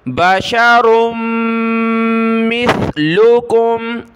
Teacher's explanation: सा पर ज़बान निकालें, सीन नहीं पढ़ना इसकी जगह।